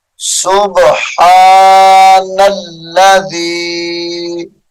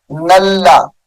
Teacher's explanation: نون کو لام مشدد کے ساتھ ملا کر پڑھیں گے